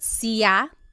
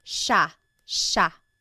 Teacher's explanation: It looks like it should be pronounced sea, but it's actually pronounced sha sha. There are some regions in the Philippines that might pronounce it sa but for the most part in the central Luzon Tagalog speaking areas it's pronounced sha sha.